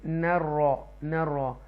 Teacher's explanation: یہ تفخیم کریں گے را کو، آپ اس کو ڈیپلی پڑھیں گے، بولڈ پڑھیں گے